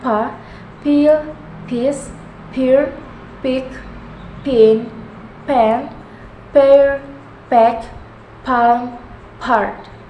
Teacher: Voiceless bilabial stop sound